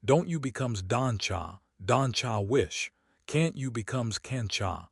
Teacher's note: T plus Y equals CH.